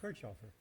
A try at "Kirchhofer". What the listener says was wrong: No ch.